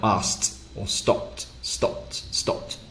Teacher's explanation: It sounds a bit more like asked or stopped, stopped, stopped. Your mouth barely makes the p or the k sound, so you just say asked or stopped.